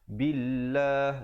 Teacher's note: lafzul jalalah dibaca nipis 2 harakat, datang sebelumnya baris kasrah.